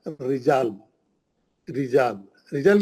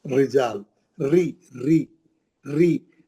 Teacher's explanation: जब भी जेर से आएगा रा कुरान में, आपका एकदम टोन डाउन कर लेना, टोन डाउन कर लेना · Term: पतला पढ़ेंगे